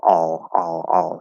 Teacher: but um yeah the the half l or the dark l i call it a half l because you don't bring your tongue all the way up